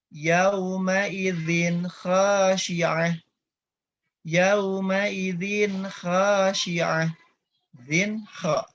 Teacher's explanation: Zin kha, langsung ya Bapak Ibu ya. Tidak ditahan terlebih dahulu, bunyi tanwinnya jelas.